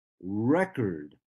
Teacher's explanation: Yes, this word is a noun. And if I say the first syllable stronger than the second syllable, I make it a noun and I say record. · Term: stress in words